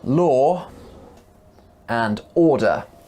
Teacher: Join them together with the word and and you can hear another sound after the word law. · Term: intrusion